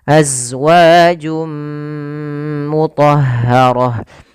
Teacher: masukkan tanwinnya ke huruf mim, suara nunnya hilang, maka jadi suara n-nya hilang. Awalnya azwajun ketemu dengan mim, masuk mim, maka berubah menjadi suara mim. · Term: Idam bunah, idgham bi gunnah